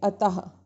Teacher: विसर्ग का उच्चारण आधे ह के समान होता है